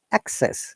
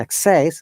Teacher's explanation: example is the access is noun and access is a verb for the verb we stress in the second syllable